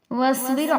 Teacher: واصبر میں را کو باریک پڑھیں گے کیونکہ اس سے پہلے را ساکنہ سے پہلے زیر ہے